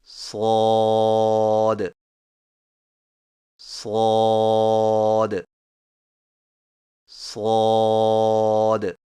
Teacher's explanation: زبان کی نوک کو سامنے والے نیچے کے دو دانتوں کے کناروں سے مضبوطی سے لگا کر اور زبان کے پچھلے حصے کو تالو کی طرف بلند کرتے ہوئے موٹی اور سیٹی جیسی آواز میں پڑھیں